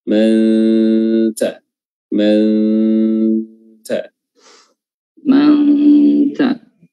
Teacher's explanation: Nun mati bertemu dengan ta ikhfa, dan tapi ikhfanya tidak dibarengi dengan suara tambahan misalnya ng, tapi dia murni ikhfanya itu berasal dari peletakan makhraj pada huruf ta